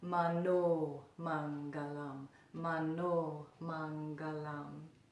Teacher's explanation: even though there's not a line over it, the O in Mano is long.